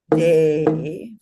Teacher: The fourth vowel is short, and the last vowel is E, long. So we have a nice alternate long, short, long, short, long. So that word properly said sounds like Devanagari.